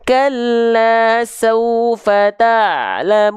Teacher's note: Jadi huruf ain jangan sampai dia dilafalkan terputus suaranya. Pastikan ain dilafalkan dari bagian tengah tenggorokan kita.